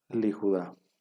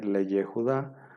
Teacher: escrito y entonces el segundo sheva se elimina no Y entonces la yot Ya deja de ser una consonante y ahora va a ser una vocal no Entonces ahora se va a pronunciar liuda en lugar de